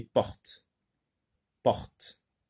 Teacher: Sans faire sonner le T.